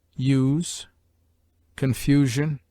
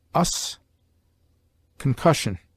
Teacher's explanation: U is long in use, confusion, or short, as us, concussion.